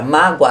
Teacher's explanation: Na palavra mágoa, a semivogal é o O, porque o A é pronunciado com maior intensidade